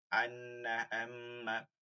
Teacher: মিমের উচ্চারণ হওয়া সত্ত্বেও এটাকে কিন্তু নাকের মধ্যে নেয়া লাগবে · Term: গুন্না